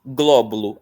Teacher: Glóbulo, a sílaba tônica é gló.